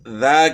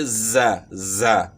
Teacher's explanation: زا جو ہے نا زبان کی نوک ثنایا سفلا اور ثنایا علیہ کے اندرونی کناروں کے ساتھ جو ہے نا یہ زبان لگے گی